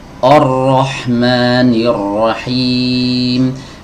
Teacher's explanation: Memang ro-nya tebal, tapi huruf hamzahnya ikut tertular menjadi tebal. Ar-Rahman, harusnya Ar-Rahman.